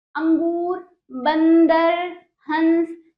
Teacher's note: अं की बिंदी नाक से बोली जाती है